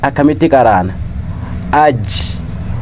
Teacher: حرف جيم وسط اللسان